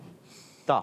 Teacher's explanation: जबान का सिरा और ऊपर के दातो की जड़ से का सिरा ऊपर की दांतों की जड़ से अदा होता है